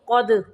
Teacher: قاف کو موٹا پڑھیں گے، دال کو قلقلہ کریں گے